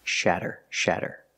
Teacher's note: we see the fast D sound again with a Double T making the fast D sound